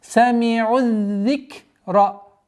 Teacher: с огласовкой даммы мы уходим на удвоенный даль. И все естественные удлинения аннулируются.